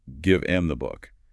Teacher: But even in non-contracted speech, a phrase like give the book often becomes give am the book. The h just vanishes. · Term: hdropping